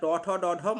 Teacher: যে বর্ণগুলো উচ্চারণ করতে গেলে আমাদের মূর্ধার সাহায্য নিতে হয় সেটা হচ্ছে মূর্ধন্য ধ্বনি